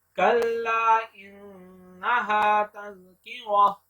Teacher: लाम को लंबा करेंगे क्योंकि इसके ऊपर मद है।